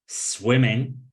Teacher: Swimming, we stress the first syllable.